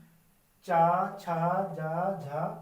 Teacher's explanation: कंठ से बाहर आओ और दांतों से अंदर जाओ जो बीच का हिस्सा होता है हमारी जीवा वहां पर जाके छू के आती है तब इनका साउंड इनकी आवाज आती है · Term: तालव्य